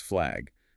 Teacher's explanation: the a sound shifts forward and upward in the mouth, sometimes sounding more like a short e. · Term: vowel fronting